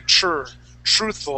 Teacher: We say tr, truthful. It's more of a CH sound.